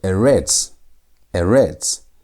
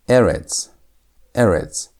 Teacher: It's emphasized on the first part of the word.